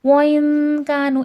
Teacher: وَإِن كَانُوا ان میں اخفا ہو رہا ہے، نون ساکن میں اخفا ہوتا ہے، نون کی آواز ناک میں چھپتی ہے. خفی کا مطلب ہوتا ہے چھپانا.